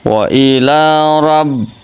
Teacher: Wa ila rabb, di atas huruf sebelum itu huruf ro-nya tafkhim, ro tafhim, ro-nya berharokat fathah, jadi ro-nya dibaca tebal. Wa ila rabb, tasdid ba, masuk ke tasdid.